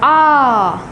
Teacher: विवृत स्वर जो है हमारा मुख सबसे अधिक खुलेगा। आ खुल गया मुख।